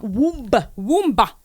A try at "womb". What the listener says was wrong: I'm sorry, but it's called womb. A clear B at the end. Womb.